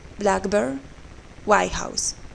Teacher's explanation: The stress is on the first part